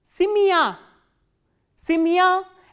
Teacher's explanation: Simya, as you can hear that this ya sound is pronounced as a combination of two sounds, which is e kratke and plus a sound